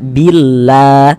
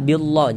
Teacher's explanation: Huruf lam yang di tengah nih, huruf lamnya lafaz Allah, huruf lam jalalahnya itu kita baca tipis, sehingga kita baca billah, jangan dibaca billah, jangan. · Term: dibaca tipis